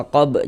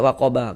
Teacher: kalau berwakaf di huruf ba kita baca waqab, jangan dibaca waqaba, kita baca waqab.